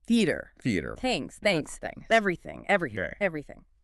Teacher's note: You should feel the air softly brushing past your tongue and teeth creating a light airy sound. No buzzing. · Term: unvoiced th